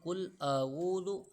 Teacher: قاف لام پیش قل، آگے ہے اعوذ، حمزہ زبر آ، عین واو پیش او، قل اعوذ، اعوذ نہیں پڑھیں گے، قل اعوذ، حمزہ کو الگ پڑھیں گے، عین واو پیش او کو الگ پڑھیں گے۔ قل اعوذ، آگے ہے ذال، زا نہیں پڑھنا ہم نے، اس کو ذال پڑھنا ہے، زا وہ سختی کے ساتھ تا ہوتا ہے، وہ والا زا نہیں ہے، ہم ذال پڑھیں گے۔